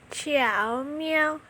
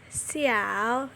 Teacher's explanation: vokal depan diujarkan ringan dan pendek, vokal tengah terdengar paling jelas dan nyaring, vokal belakang tidak jelas karena hanya merupakan pergerakan arah posisi lidah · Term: Vokal rangkap 3